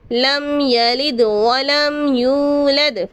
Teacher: میم ساکن کے بعد یا آ رہا ہے، یہاں پر اظہار شفوی ہوگا